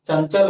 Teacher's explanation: उच्चारण करते समय नाक से हवा निकल रही है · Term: अनुस्वार